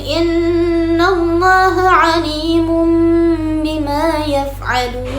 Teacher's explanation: mengganti suara huruf nun sukun atau tanwin menjadi suara huruf huruf mim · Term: iqlab